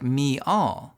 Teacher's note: a subtle extra Y sound known as a glide is added by some speakers to transition between vowels